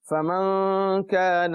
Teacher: نون ساکن کے بعد کاف آیا، حروف اخفا میں سے ہے، لہٰذا میں نے غنہ کیا